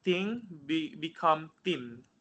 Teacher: Japanese speaker may pronounce th as just t, because in Japanese language they never use h.